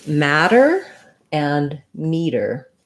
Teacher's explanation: they both have a flap so it sounds a little bit like a d